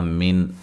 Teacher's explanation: نون کو لمبا نہیں کرنا۔ من، نون ساکن کا یہاں اظہار ہے، غنہ نہیں کریں گے